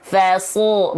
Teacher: Fa-nya tetap tipis, shad-nya tebal. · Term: huruf tebal